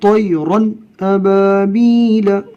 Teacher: نون کو ظاہر کر کے، یعنی آواز ناک میں نہیں جائے گی، نون کو ظاہر کر کے پڑھیں گے، اس کو اظہار کہتے ہیں۔ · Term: اظہار حلقی